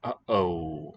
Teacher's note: Glottal stop is the name of it. So we say it in uh-oh.